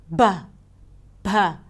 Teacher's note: there is also an aspirated voiced stop sound, like 'b(h)'.